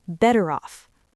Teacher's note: the R in better links directly into the O in off.